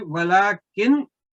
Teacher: تو یہ اگر آپ نے یہاں پہ وَلَكِن وقف کرنا ہے تو پھر غنہ کی آواز نہیں آنی چاہیے, پھر اس کو اظہار کے طور پر پڑھنا. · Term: وقت بالاظہار